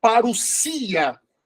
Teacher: Aí nós temos o ômicron e o Y, que esse ditongo vai se tornar U.